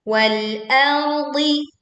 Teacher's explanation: wal tipis ya, wal a tipis, ro-nya tebal, ardi, dodnya tebal. Wal ardi za panjang 2 harokat, tisadr.